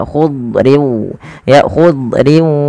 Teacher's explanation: Padahal huruf dad tidak punya sifat qalqalah, tapi dia punya sifat yang pertama isti'la, yaitu pangkal lidah terangkat dan dia menebal. Kemudian yang kedua itbaq. · Itbaq itu lidah kita lebih melekat-lekat ke atas langit sehingga dia menebal suara huruf dadnya.